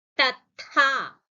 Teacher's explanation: Ha is a Mahaprana. A forceful exhalation for a Mahaprana.